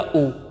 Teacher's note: तो ऊ बोलते समय जो हमारे होठ हैं वो तुरंत व्रत का आकार ले लेते हैं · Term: व्रतमुखी